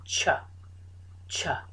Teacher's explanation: this is made by putting the tongue on the alveolar ridge, which is at the top, the blade of the tongue, so at the top of the mouth, the ridge, and pushing air out.